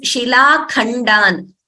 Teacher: The Mahaprana is for K, not for D.